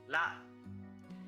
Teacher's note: Start by pronouncing it as an L, but then form more of an R sound.